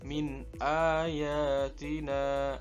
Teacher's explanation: nun mati bertemu hamzah yang merupakan huruf idhar, sehingga suara nun mati dibaca jelas tanpa dengung